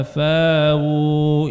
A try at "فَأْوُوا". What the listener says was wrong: Ini qalun nggak ada ibdal.